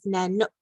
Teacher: you're pronouncing the K and it's right in the middle of your mouth